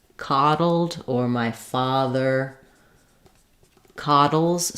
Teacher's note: In coddle, we have the open ah vowel.